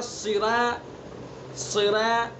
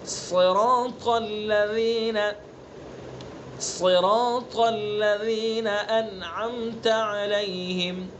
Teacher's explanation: صاد کو بھی پر پڑھیں گے، را کو بھی پر پڑھیں گے، الف کو بھی پر پڑھیں گے، طا کو بھی پر پڑھیں گے. یہ 4 حروف ہیں، چاروں حروف پر پڑھے جائیں گے.